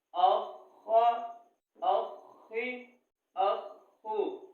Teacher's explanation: حمزہ زبر خا اخ خا پیش خو اخو اخا اخی اخو. تشدید والے حرف کو 2 دفعہ پڑھنا ہے اور خا کو ہم موٹا کر کے پڑھیں گے